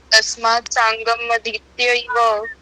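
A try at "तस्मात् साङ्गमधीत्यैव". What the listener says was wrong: गलत सांगम थोड़ी है म पूरा लिखा है ना पूरा बोलिए तस्मात् सांगम अधीत्यैव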